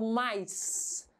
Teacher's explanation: quando vai falar o mais, sai aquele chiado no final da palavra